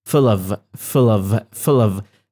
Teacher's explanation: I'm not stressing the word of I'm stressing the word full